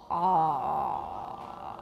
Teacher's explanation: Pharyngeal consonant. All right, let's make the lowest and most back ah we can make.